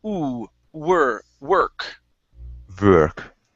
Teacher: start off with an u sound with the w · So it's gonna be ooh, were. So start off with an ooh sound instead of v.